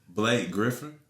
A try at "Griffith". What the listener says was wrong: Griffith. Griffith. Not Griffin. Griffith.